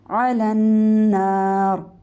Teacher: را کو موٹا کریں گے اینڈ میں